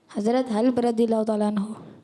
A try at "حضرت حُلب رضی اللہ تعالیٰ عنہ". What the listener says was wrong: حلب، ہاں پہ زبر نہیں ہے، پیش ہے. رضی نہیں ہوتا، عربی میں دواد ہوتا ہے، زواد نہیں ہوتا. رضی اللہ تعالیٰ عنہ.